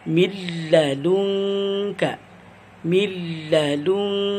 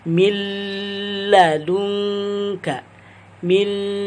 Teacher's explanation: Yaitu ketika contohnya dengan cara membaca idgham bila guna, yaitu dengan memasukkan suara nun bersukun atau tanwin sepenuhnya kepada huruf lam atau ra tanpa diikuti dengan suara dengung